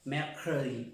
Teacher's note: A veces como que escuchamos si dijéramos crow, mercredi. Esa E, mercredi. Como que si sonara una O, pero no es una O.